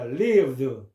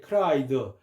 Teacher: 유성음으로 끝나는 말은 드로 발음한다는 거죠